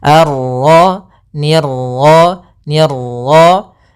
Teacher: Untuk pantulan dalam huruf ra itu cukup sekali saja, karena sifat ra ada sifat takrir, yaitu pengulangan, tapi hanya sekali.